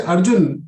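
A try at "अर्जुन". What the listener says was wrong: When you say Arjun, it is Hlantana, not Dirghana, not with Swara.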